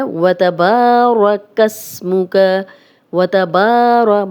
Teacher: با الف مدہ ہے، لمبا کریں گے 2 حرکات